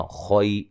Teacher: او و مدہ ہے، تیا لمبا نہیں کرنا۔ خوئی، خو کو موٹا ادا کرنا ہے، یا لین ہے۔